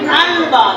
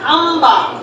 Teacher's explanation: নয়ের পরিবর্তে পরের অক্ষর মিলাইছি। আর যখন পরিবর্তন করছি তখন ন বাদ দিয়া ম পড়ছি। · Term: ইকলাব